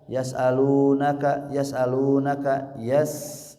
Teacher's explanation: Suara hamzah disempurnakan, lu-nya 2 harokat · huruf sin kecil ya, dialirkan suara dan nafasnya yas'alunaka, jangan tergesa-gesa.